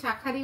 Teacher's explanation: কিন্তু যখন আমরা একসাথে শাখারই উচ্চারণ করছি, তখন কিন্তু একটা আ লোপ পেয়ে যাচ্ছে।